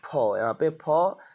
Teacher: हमारे होंठों से जो है हवा निकल रही है, तो घर्षण जो हो रहा है होंठों में हो रहा है, तो फ का उच्चारण स्थान होगा ओष्ठ, ठीक है। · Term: ओष्ठ ध्वनि